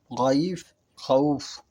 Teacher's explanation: ৪ নম্বরে গাইন, খা। এই বর্ণ দুটি হলক বা কণ্ঠনালীর শেষ ভাগ হতে উচ্চারিত হয়।